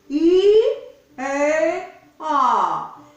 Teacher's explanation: Là où il se rejoint quand vous baillez, c'est un petit trou d'épingle, vous mettez I, E, A. Le E est plus ouvert que le I et le A est plus ouvert que le E.